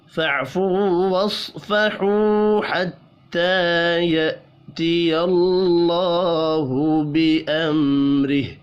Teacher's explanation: اللہ کا نام زبر کی وجہ سے پر پڑھا جائے گا